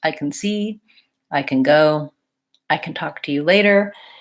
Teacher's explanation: the I can is really shortened and reduced